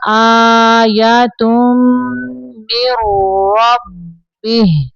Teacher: میم کو را کے اندر ملانا ہے، نون کے اندر نہیں ملانا